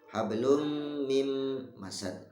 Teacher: Itu dileburkan, bunyi min ya. Min nun sukunnya masuk lebur ke dalam huruf mimnya lafaz mim masad ya. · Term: Idgham